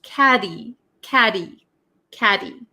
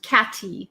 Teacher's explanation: And you might notice that caddy in American English, the t um sometimes is referred to as a flap t. So it doesn't sound like a hard t sound. Okay? It's like a d almost. · So it doesn't sound like a hard t sound. Okay, it's like a D almost. Catty. Not catty.